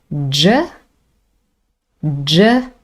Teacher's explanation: clear vibration from the vocal cords. This is a voiced sound.